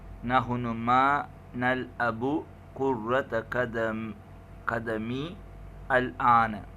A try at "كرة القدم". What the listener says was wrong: كرة. Without the shadda on the ra. Not كرة. القدم.